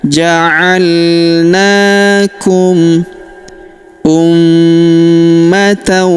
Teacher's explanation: Waadzalika ja'alnakum. Huruf na kita panjangkan dua harakat karena terdapat alif kecil di atasnya. · huruf ma berharokat tasydid, maka kita tahan dan kita tekan serta kita dengungkan 2-3 harokat